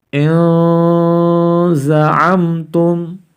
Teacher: nun sukun nya harus dibaca samar-samar ya karena bertemu dengan salah satu huruf ikhfa